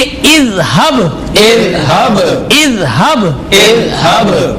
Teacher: با. لہذا با پر قلقلہ ہوگا، ذال پہ ہمیں قلقلہ نہیں کرنا